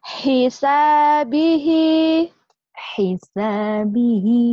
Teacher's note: Mat silah qasira. Bagus, cara bacanya dua ketukan atau dua harokat.